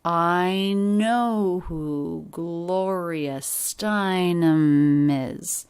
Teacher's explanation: ending m links right into the beginning vowel e of is is pronounced with a light weak z sound at the end